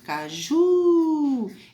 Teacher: Então, já percebi que a sílaba tônica está na última. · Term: Oxítona